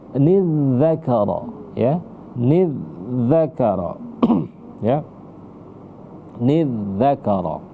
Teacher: Sama seperti tempat keluarnya itu sama seperti huruf fa. Ujung lidah disentuhkan dengan ujung gigi bagian atas. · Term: huruf zal